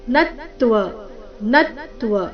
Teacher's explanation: ನತ್ವ ನ ಮೇಲೆ ಆಘಾತ